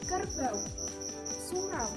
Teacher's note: diftong naik menutup mundur atau AU